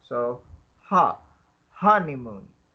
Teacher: So there are three syllables in honeymoon, with the stress on the first syllable